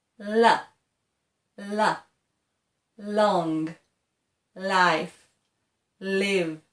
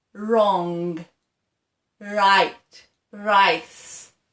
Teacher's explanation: when we say that la sound okay our tongue is nearer to the teeth and it's not curled up and for the R sound it's opposite the R sound the tongue goes back and it curls like that